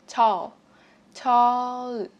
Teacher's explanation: Các bạn bật phụ âm L cuối từ ra cho mình nhé, bằng cách là đưa lưỡi lên phần lợi phía trên, chạm lưỡi lên phần lợi phía trên.